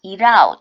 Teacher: T 사운드 모음과 모음 사이 약화